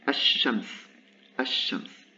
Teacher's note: The lam completely disappears. There is an assimilation for these consonants.